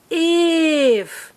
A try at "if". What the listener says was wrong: Say it fast. No, not slowly. Say it fast. If.